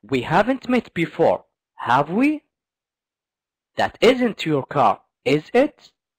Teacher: So with the tag questions, you have to go up at the end. You have to go high at the end. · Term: rising intonation